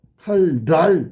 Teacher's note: 칼날 앞에 리을 때문에 니은이 리을로 바뀌는 거야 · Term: 순행동화